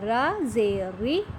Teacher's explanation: کیونکہ اس کے نیچے زیر ہے، زیر والا جو را ہے وہ پر کر کے نہیں پڑھا جائے گا، بلکہ یہ را بریک پڑھا جائے گا، را زیری۔ اوکے اسٹوڈنٹ، اس کو را زیری بولیں گے تو یہ رونگ ہو جائے گا۔